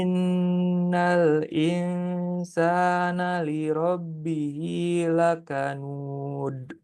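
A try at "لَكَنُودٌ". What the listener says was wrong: Nud. Jangan simpan di dalam. Nud. Di depan. Nud. Jangan tebal ke dalam gitu ya. Nud.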